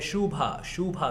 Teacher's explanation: जो सेकंड वाला है वो उ खींचा हुआ है